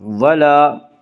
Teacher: ولا تلبسوا الحق، ولا الف مدہ، الف ہمیشہ مدہ ہوتا ہے، الف سے پہلے ہمیشہ زبر ہوتا ہے، الف مدہ کو ایک الف کے برابر کھینچ کر پڑھیں گے